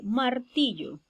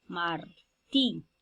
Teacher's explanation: la sílaba tónica es ti, martí, porque ahí está la mayor elevación de la voz